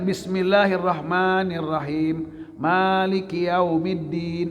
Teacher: Ar-Rahmanir Rahimnya dengan Maliki yaumiddinnya sama-sama madnya mad ada disukun. Panjangnya enggak boleh beda-beda.